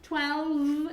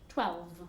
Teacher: it's pronounced with that V sound you have to move your vocal cords